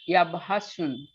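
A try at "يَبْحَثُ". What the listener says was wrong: ইয়া ভাসুন না, ইয়া ভাসু। ইয়া ভাসু। স্পষ্ট দেখতে পারতেন দুই পেশ, তবু আপনি এটাকে বাদ দিবেন, কারণ আপনি জানেন যে শুধুমাত্র নাউনের ক্ষেত্রে দুইটা পেশ হয়, তানভিন হতে পারে শুধু নাউনের ক্ষেত্রে।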